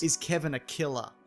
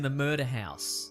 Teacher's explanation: Les R ne sont pas prononcés. Et c'est le cas surtout des R en fin de mots